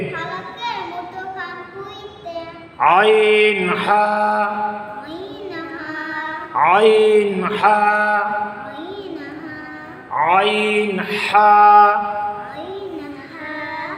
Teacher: 2 number মাখরাজ হলকের মধ্যখান হইতে আইন হা